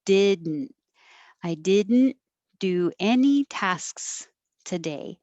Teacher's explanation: the d and the n are made in the same place so you just hold your tongue there and make a noise